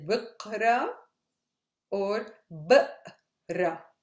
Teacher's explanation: So, ana, again, book, b, ra. In Levantine, we don't say the hamza with verb to read in the present tense.